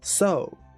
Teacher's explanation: He's saying so he's rising on the O.